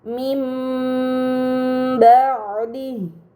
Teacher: Kemudian pada kata mim ba'di terdapat nun sukun bertemu dengan huruf ba, ini dinamakan iklab. Maka nun sukun dibaca mim dengan gunnah yang dipanjangkan.